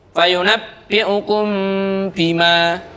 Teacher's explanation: apabila ada mim mati bertemu dengan ba. Cara membacanya dibaca samar, kemudian diikuti dengan suara mendengung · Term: ihfa syafawi